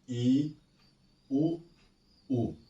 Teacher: संवृत close, जिन स्वरों के उच्चारण में मुख द्वार लगभग बंद रहता है